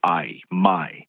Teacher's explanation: your mouth starts in one sound, the ah, and it moves to the E. So I, my. In lots of parts of South Carolina, people don't always do that. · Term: diphthong